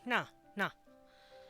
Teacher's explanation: a retroflex is that Na and because it's nasal it's coming from the nose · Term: nasal retroflex